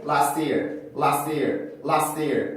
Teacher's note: 아예 S 발음만 하고 T 발음을 없애고 발음해도 그렇게 어색하진 않습니다